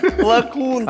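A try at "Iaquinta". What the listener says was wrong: А где ты букву «Л» видишь? Почему ты решил, что с маленькой буквы написали? Ай. Яквинта.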